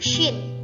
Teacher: memiliki sifat hams, rokhawah, dan tafashi, yakni mendesis, nafas menyebar, suaranya tidak tertahan.